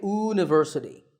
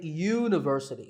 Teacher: so that first sound is a ya sound which is a consonant sound